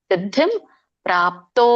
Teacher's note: ದಕ್ಕೆ ದೊಡ್ಡ ಧವತ್ತಿದೆ, ಗಮನಿಸಿ. ಸಿದ್ಧಿಂ ಇಲ್ಲಿ ಮುಂದೆ ಅನುಸ್ವಾರ 0 ಮುಂದೆ ಪ ಒತ್ತಿದೆ, ಸಾರಿ ಪ ಇದೆ. ಸೊ ಪ ವರ್ಗದಲ್ಲಿ ಬರೋದ್ರಿಂದ ಮ ಉಚ್ಚಾರಣೆ ಆಗುತ್ತೆ.